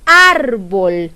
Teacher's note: veo bien cuál es la sílaba que pronunció con más fuerza de voz a mí me parece que es la sílaba ar · A mí me parece que es la sílaba ar, porque yo digo árbol, yo no digo árbol, yo digo árbol. Y por lo tanto, la sílaba tónica es ar.